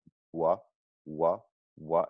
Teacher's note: the wah sound is all about tightness of the lips it's really in a like forward and very rounded position